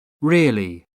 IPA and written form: ˈrɪəli (really)